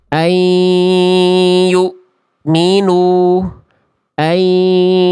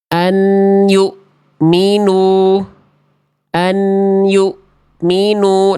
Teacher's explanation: Kesalahan yang seringki terjadi ketika kita melafalkan huruf nun sukun pada hukum tajwid idgham bigunah adalah yang pertama suara huruf nunnya atau konsonan n-nya masih terdengar dengan jelas. Kalau jelas ya hukum tajwidnya bukan idgham.